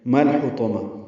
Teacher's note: میم کو لام سے ملانا ہے، لام ساکن پہ اظہار